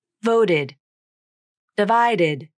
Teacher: Both the t and d in these words turn into the flap, and this is very common in many ed words that fall under rule number 3.